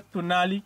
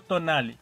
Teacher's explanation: en las comunidades cercanas a la Malinche se pronuncia tunali y no tonali para el día